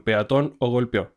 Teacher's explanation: Aunque orgánicamente muchas veces la E semivocal se pronuncia como una Y. Pero la Reclist la incluye porque pues también se puede pronunciar como una E.